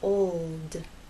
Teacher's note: But to get that L sound, you must keep it pressed against that bump, and there should be vibration the whole time, from the O to the L and finally into the D. Old. It's important to make the L long enough so that it's heard.